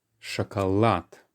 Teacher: although in English we put it at the start, chocolate, in Russian the stress jumps to the end.